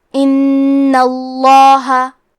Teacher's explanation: کلمت ان میں نون پہ تشدید ہے تو ہمیں 2 حرف کے برابر نون کو پڑھنا ہے، اور کیونکہ تشدید زبر کا ہے تو ہم لفظ الجلالہ کے لام کو موٹی آواز میں پڑھیں گے